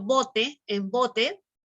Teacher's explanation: la voz se eleva en la sílaba bo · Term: acento